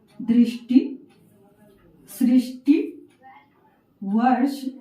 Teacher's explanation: ट और जो श है वो दोनों ही क्या है? मूर्धन्य वर्ण है, तो दोनों एक ही स्थान से उच्चारित हो रही है।